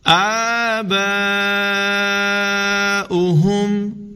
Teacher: مد متصل ہے، اس کو بھی 3 الف تک لمبا کر کے پڑھیں گے